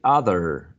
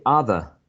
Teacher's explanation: if you say other, sounding like General American, then that is rhotic. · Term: rhotic ending